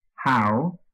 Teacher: how followed by four weak syllables then ought followed by one weak syllable and lastly start followed by nothing at all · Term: stressed syllables